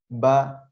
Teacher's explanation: Coba baca huruf ba, biasa saja ba, pasti nggak ada keluar nafas. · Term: sifat jahar